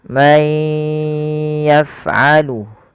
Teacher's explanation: masukkan suara nunnya kepada huruf ya dan ditahan. May yaf'alu, hati-hati dan pada huruf fa jangan memantul, jangan may yaf'alu.